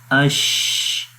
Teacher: آواز بھی جاری ہے اور سانس بھی جاری ہے۔ استفال، شین کو باریک پڑھیں گے، استفال کا مطلب باریک، اس وجہ سے اس کو پڑھیں گے شین، باریک ہوتا ہے۔ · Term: رخاوت